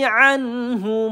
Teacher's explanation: Anhu nun sukun bertemu ha, izhar halki kita baca dengan jelas ya, tidak kita panjangkan